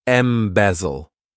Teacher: this verb has three syllables and the stress is on that second syllable